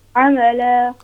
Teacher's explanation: So when you read لِيَبْلُوَكُمْ أَيُّكُمْ أَحْسَنُ عَمَلًا, it's ayn, it's not hamza. It's ayn from middle of throat.